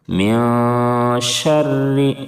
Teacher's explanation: شین کو بلند سیٹی جیسی آواز نکال کر کے پڑھیں گے، را کے نیچے زیر ہے اس لیے را کو باریک پڑھیں گے، پتلا پڑھیں گے۔